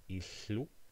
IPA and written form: iɬːu (house)